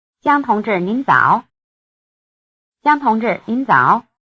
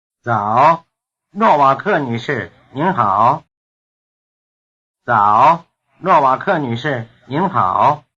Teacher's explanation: the person's name may come before or after the rest of the greeting and is pronounced as an independent exclamation